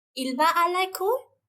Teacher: we modulate our voice in a high tone at the end of the sentence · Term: l'intonation